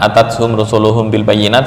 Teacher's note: jika ada mim bertemu ba, maka furjah atau rongga antara dua bibir dibuka itu lebih utama.